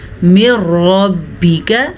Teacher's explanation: را کو پر پڑھنا لازمی ہے را پہ زبر کی وجہ سے۔